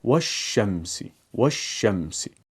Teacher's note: اس کی پہچان ایسے ہے کہ پہلے تو اس کے اوپر کوئی بھی حرکت نہیں ہے، اور دوسری بات ضرور اس کے اگلے حرف کے اوپر تشدید لگی ہوگی۔ والشمس ہم واو کو شین سے ملائیں گے